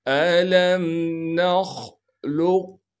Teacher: قاف کو پڑھنا ہے لیکن بغیر قلقلہ کے